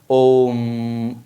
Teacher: स्व स्वर का तीन गुना समय लगता है कहने का मतलब जब इसका उच्चारण किया जाएगा तो हर्ष स्वर में जितना समय लगा था उसका तीन गुना समय लगेगा इसको बोलने में आप बोलते हैं ना ओम लंबा खींच के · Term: प्लुत स्वर